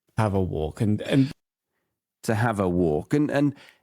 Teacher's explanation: the walk is coming down in the tone and then the and bumps it up